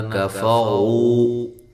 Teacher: یہاں کاف اور فا دونوں باریک ہیں، اور رو کو موٹا ادا کرنا ہے، واو مدہ ہے۔